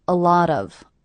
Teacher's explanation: I hear these 3 words as one unit. A lot of, with the stress happening on the middle word.